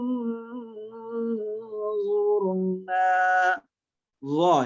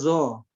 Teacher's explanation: Ujung lidah bawah dengan ujung gigi seri depan atas